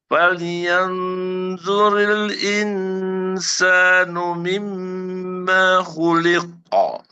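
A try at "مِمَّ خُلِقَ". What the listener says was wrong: Oke, maknya jangan panjang. Ma khuliqa.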